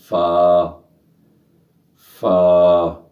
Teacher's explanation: فا، ہونٹوں سے ادا ہوگا